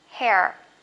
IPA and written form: heə (hair)